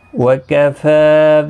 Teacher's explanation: فا کے اوپر کھڑی زبر ہے، ایک الف کی مقدار کے برابر کھینچ کر پڑھیں گے